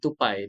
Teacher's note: perkataan tupai T tu kan kena hujung lidah kena kena sentuh gusi kan, T kan.